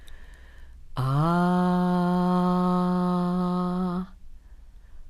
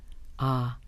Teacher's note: The sound comes from the throat, way in the back of the mouth. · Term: ah sound